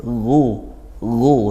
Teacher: ghain tebal isti'la juga, pangkal lidahnya naik. Ghu seperti itu tanpa desis nafasnya, mengalirkan nafas tidak perlu.